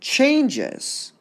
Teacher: overall, changes would be stressed, unstressed.